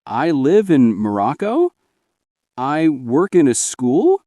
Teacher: ending sentences with rising intonation, like a question. Some learners end sentences with a question tone because they're unsure.